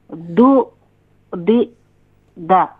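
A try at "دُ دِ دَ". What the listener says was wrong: ہاں ابھی بھی جھٹکا محسوس ہو رہا ہے. اچھا یہ بتائیں کہ دال کا مخرج کیا ہے؟ دال کا مخرج کیا ہے؟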